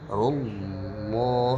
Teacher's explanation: ketara bahwa lafzul jalalahnya ini tebal, makanya ada penahanan sedikit. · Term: tafkhim lafzul jalalah